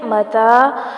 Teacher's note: متا مد اصلی بالالف کا قائم مقام، تھوڑا سا کھینچیں گے